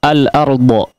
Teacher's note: al-ardu kita ketahui bahwa di situ ada huruf ra yang ditebalkan, demikian juga huruf setelahnya adalah huruf yang tebal